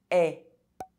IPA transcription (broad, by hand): ɛ